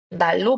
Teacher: 리을의 영향을 받아서 앞에 니은이 리을로 바뀌고 있는 것 알 수 있겠죠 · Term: 역행적 유화